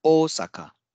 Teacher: pronounced as Osaka so there will be a stress in the o sound at the beginning